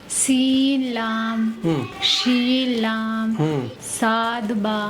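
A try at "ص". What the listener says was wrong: साद नहीं, ये सीन बन गया इस तरह से। कैसे पढ़ेंगे? साद बा, मोटा करके साद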